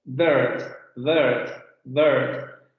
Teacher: Central semiabierta no labializada. Posición central de la lengua, un poco como la vocal media, no vamos a mover mucho en términos de la lengua va a quedar en una posición media, solamente que se va a abrir un poco más la boca con relación a la media y eso tiene un poco la misma abertura que esta, ¿vale?